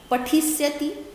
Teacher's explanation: पठिष्यति में मूर्धन्य सा आधा लगा होता है, स्यति स्यत स्यंति में देखोगे, बुक्स खोलोगे सामने देखोगे कि मूर्धन्य सा आधा होता है।